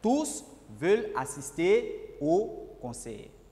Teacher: Ici, on a prononcé le S de tous.